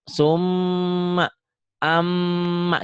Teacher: ditahan panjangnya dua sampai harakat atau tiga ketukan ya, tiga harakat.